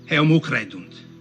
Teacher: So, rather typically of Italians, and also actually something that was occurring for some speakers of Latin even in this time period, was confusions of where to put the H sound. He says heum instead of eum.